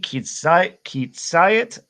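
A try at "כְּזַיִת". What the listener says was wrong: No, it's not kitz, it's kazait.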